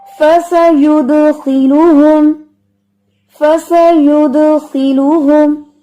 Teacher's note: جب خا کے نیچے زیر آئے گی نا تو اس کی موٹائی تھوڑی کم ہو جائے گی، یعنی یہ ویسے موٹا نہیں پڑا جائے گا لیکن اس کی موٹائی تھوڑی کم ہوگی.